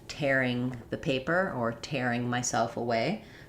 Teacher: we also have tearing with the air diphthong, as in tearing the paper or tearing myself away.